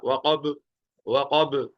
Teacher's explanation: وقب کے اندر قاف موٹا اور با پر قلقلہ